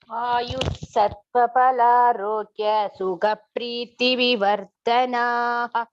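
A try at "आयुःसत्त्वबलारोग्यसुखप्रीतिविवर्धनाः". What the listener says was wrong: No pause here. Balarogya. Continuous.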